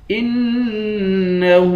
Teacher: انه حمزے کو نون سے ملا کر نون پر غنہ کریں گے